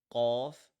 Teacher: the letter qaf is being pronounced from the back side of the roof. It is heavier, it is stronger, and it has substance like a filled water ball.